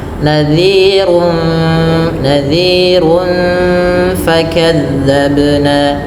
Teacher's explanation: Karena bertemu dengan fa yang mana fa termasuk salah satu huruf ikhfa maka suaranya disamarkan kepada fair langsung kepada makhraj huruf fa yang ada di bibir gigi atas menempel dengan bibir bawah